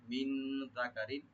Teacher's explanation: রা নিচে যে দুই জের আছে তানবিন, এখানে আমরা জাহার করব, গুণা হবে না।